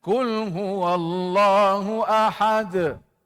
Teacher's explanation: Dal di situ bila kita wakaf nama Qalqalah kubra tuan-tuan pantulan yang besar